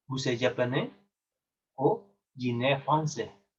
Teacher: La entonación es descendiente, ¿sí? Va hacia abajo.